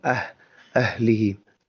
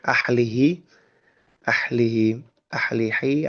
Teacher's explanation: Kemudian mungkin yang coba kita coba pertegas bahwa ahlihim huruf H ini itu adalah huruf H gede gitu kan ya. Huruf H nu ageng gitu. pengucapannya adalah tenggorokan bagian dalam.